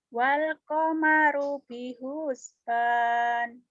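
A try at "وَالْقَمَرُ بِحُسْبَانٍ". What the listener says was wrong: Bihusban, jangan bihusban. Kan nggak ada yang manjangin atuh,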